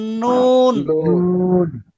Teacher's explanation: জিহ্বা উপরে উঠবে কিন্তু উল্টাবে না।